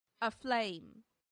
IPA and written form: əˈfleɪm (aflame)